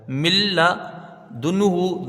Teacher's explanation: نون ساکن لام سے بالکل بدل جائے گا۔ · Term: ادغام تام بلا غنہ